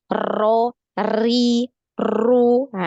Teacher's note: diperhatikan adalah takrirnya ya Apa itu takrir takrir ini getaran yaah ada beberapa yang ketika mengucapkan huruf ro ini terlalu banyak takrir atau getarannya